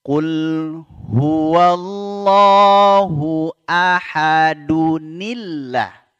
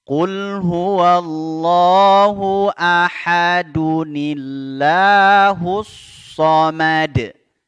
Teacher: tanwin bertemu Hamzah wasal ya maka dihilangkan satu baris e tanwinnya ya kemudian yang dihilangkan tersebut diganti dengan Nun berbaris kasrah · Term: Nun wiqayah